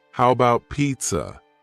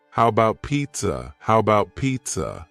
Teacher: the first a in the word about is gone it's just missing